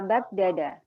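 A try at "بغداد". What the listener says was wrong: Ya, daknya dipanjangin Ibu ya, Baghdad.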